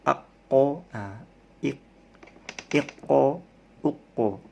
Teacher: Di sini ada huruf qalqalah. Huruf qaf termasuk huruf qalqalah, jadi memantul.